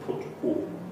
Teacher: This picture doesn't show the lip rounding, but to do the put vowel, you not only have the tongue in the high back part of your mouth, you also round the lips